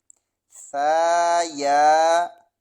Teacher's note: ثا نرمی والے حروف میں سے ہے، زبان کی جو نوک ہے وہ دانتوں کے ساتھ لگے گی۔